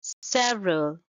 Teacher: it's a three syllable word and stress is on the first syllable